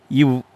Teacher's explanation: கீழ் உதடும் மேல்வாய் பல்லும் இணைவதால் பிறக்கும் எழுத்துக்கள்